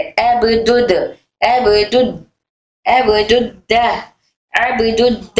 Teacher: फिर दाल तशदीद वाला है, दाल तशदीद वाला है, तो हम यहाँ पर लाम को छोड़कर सीधा दाल को दाल से पढ़ रहे